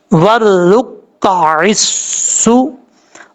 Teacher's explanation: عین زیر سین، عس، سین پیش سو، ورک عسو. عین کو اپنے مخرج ادا کرنا ہے، حمزہ کی آواز نہیں آنی چاہیے.